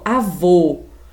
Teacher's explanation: quando eu vou pronunciar sílaba vou que é uma sílaba tônica eu fecho quase a boca · eu fecho quase a boca, eu falo sem intensidade, eu falo sem força. Então, esse O é uma vogal fechada